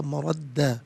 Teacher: مردن وقف کی صورت میں مردہ پڑھا جائے گا، مردہ۔ دونوں مقامات پر دو زبر کی تنوین ہے، دو زبر کی تنوین وقف میں الف سے چینج ہو جاتی ہے، تو اسی لیے وقف کی صورت میں مردہ پڑھیں گے۔